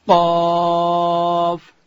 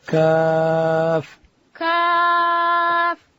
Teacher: قاف کاف او دا موږ کوچنی کاپ ورته وایو نو زده کوونکي و دې ته کوچنی کاپ وایي او هغه دوه ټکي چې پر سر لري هغه ته لی قاف لی قاف چې دی هغه به ډک وایو دا بل کوچنی کاف چې دی هغه به باریک وایو